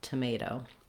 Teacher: the second O in tomato is a clear vowel. It's not stressed, but we do use that diphthong O, so hold it a little long and use that clear vowel, tomato.